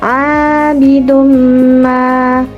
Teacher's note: dhammah tanwin dibaca berdengung dan lebur ke huruf mim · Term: idgham bi gunnah